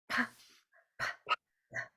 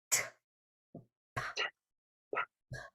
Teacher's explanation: We're holding the air and then letting it go because it is a plosive.